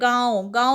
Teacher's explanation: गांव-गांव में फिर से नाक और मुंह दोनों से आवाज आई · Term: अनुनासिक